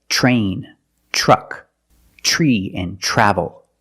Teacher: When you have tr together in any situation, you can pronounce it tur, but usually we don't. We pronounce it ch plus the r sound. Ch. Example, train, truck, tree, and travel. · We pronounce it ch plus the R sound, chur.